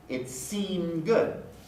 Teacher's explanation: the d doesn't get pronounced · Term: alveolar stop being deleted